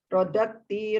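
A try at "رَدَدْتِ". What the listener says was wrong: Ya, udah lumayan, tapi mesti tati itu panjang pendeknya masih tetap harus diperbaiki ini.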